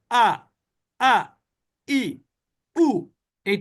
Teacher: হামজার উপরে যখন জবর জের হয় বা পেশ হয় তাহলে ধাক্কা না তারপরেও একটু ধাক্কার মত উচ্চারিত হয়